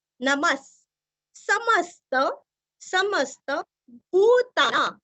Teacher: नमः के आगे जो विसर्ग है उसका उच्चारण हल्का सा स आएगा